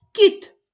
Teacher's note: перший звук к який він приголосний м'який